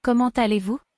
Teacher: comment, the T at the end gets pulled to aller, so it sounds like comment aller. EZ in French is pronounced AY, and obviously vous ends in an S, isn't followed by anything, so that S is silent.